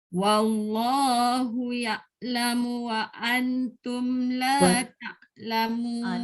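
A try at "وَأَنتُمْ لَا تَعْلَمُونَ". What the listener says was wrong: Dah betul dah hamzah tapi tak dengung pula nun dengan ta. Wa antum. Wa antum la ta'lamun.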